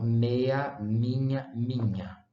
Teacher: a presença nasal, ou seja, da M, que é uma bilabial nasal, forçou aqui a nasalização da vogal